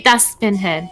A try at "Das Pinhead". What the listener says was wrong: It's not Das Pinhead. It's Das Pinhead. Yeah, it sounded like you said Spinhead, and I was like, no.